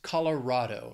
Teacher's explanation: this state has four syllables the stress is on that third syllable even though it's rad it's Colorado not R Colorado the Rocky